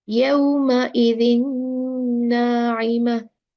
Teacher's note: So this will merge, the noon sakina of tanween merge with the noon and the shadda will come